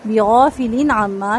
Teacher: لام کی تنوین کے بعد عین یہاں پر اظہار ہوگا، اظہار حلقی